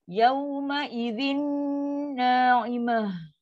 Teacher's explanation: Ta marbutah bila waqaf bunyi ha. Ha yang sukun, lepaskan angin.